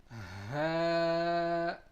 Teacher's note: Ha is pronounced from the lowest part of our throat. Ha. And also you can say it is pronounced from the chest.